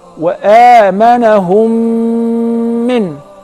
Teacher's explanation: That is the letter mim. So if the first mim is non-vowel or sakina followed by a voweled mim, so I will merge the first in the letter and I will pronounce them as one